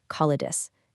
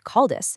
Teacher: See how that short medial vowel it was aggressively deleted. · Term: syncopy